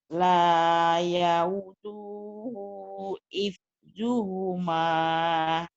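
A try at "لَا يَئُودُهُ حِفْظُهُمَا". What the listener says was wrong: Ya, itu yang panjang U-nya, du-nya pendek. Ulangin, Bu.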